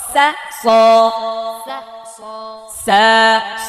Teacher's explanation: এটা হচ্ছে সা পাতলা, সদ মোটা স, এই যে পার্থক্য